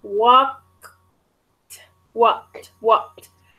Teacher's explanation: I'm really actually not pronouncing the K sound.